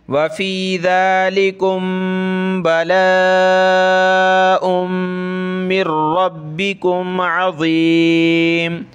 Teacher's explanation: میم ساکن کے بعد یہ جو ہے با آ جائے تو وہاں ہم نے ناک میں آواز پیدا کرنی ہے